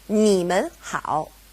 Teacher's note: because we have mun separating ni and hao, they both go back to being third tone